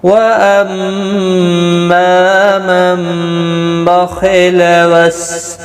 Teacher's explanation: میم مشدد پر غنہ ہوگا، ما الف مدہ بھی ہے، ایک الف کی مقدار کے برابر کھینچ کر بھی پڑھیں گے. · نون ساکن کے بعد متحرک با آیا ہے تو یہاں پر قلب ہوگا